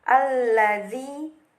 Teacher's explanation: karena huruf alif lam bertemu huruf lam, dibacanya secara idgham yaitu masuk ke lam. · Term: alif lam syamsiyah